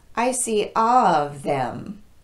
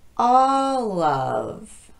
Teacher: ending consonant like it's the beginning of the next word so we basically move that ending consonant sound onto the beginning vowel